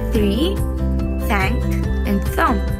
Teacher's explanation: They also give English the TH blow sound